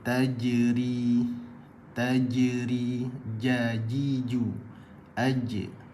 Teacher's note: tengah lidah ni naikkan ke lelangit atas